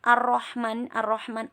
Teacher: alif lam nya itu tidak dibaca karena ini alif lam syamsiah